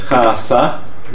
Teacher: the interdentals are eliminated by turning them into sibilants